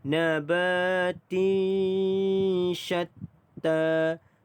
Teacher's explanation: Dan ba dibaca dengan panjang 2 harakat, mad asli huruf alif. Tinsha, tanwin bertemu huruf shin, dengung 2 harakat, ikhfa hakiki